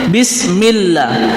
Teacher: Kalau bismillah itu lafzul jalalahnya itu tarqiq, tipis, karena diawali oleh kasroh.